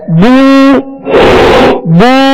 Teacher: پیش کی ادائیگی میں ہونٹوں کو گول کریں گے تو معروف پڑا جائے گا, ورنہ اگر ہونٹوں کو گول نہیں کیا تو یہ مجہول پڑا جائے گا, بو یوں بن جائے گا.